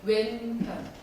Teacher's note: 그렇죠. 왼자 발음하실 때 니은 받침은 혓바닥을 윗니빨 뒤쪽에 붙였다가 내려오시면 돼요. 왼 할 때는 혀 끝을 치아에 대셔야 돼요.